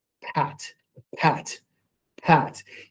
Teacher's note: all these sounds are made with the lips · You can actually put your hand in front of your face and you can feel, right? You can feel the puff of air that comes out. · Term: labials